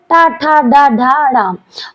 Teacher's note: और ये मूर्धन्य ध्वनि का कहलाता है।